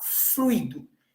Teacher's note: Aí nós temos a vogal U e a vogal I. Então, a gente fala fluido, dando ênfase, né, na letra U.